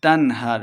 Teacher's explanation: بغیر غنہ کے پڑھیں گے